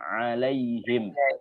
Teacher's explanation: Jadi mana makhrajnya, tempat keluarnya itu adalah tengah tenggorokan.